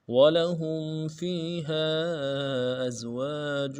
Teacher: وَلَهُمْ میں ہم میں میم ساکن ہے، غنہ کریں گے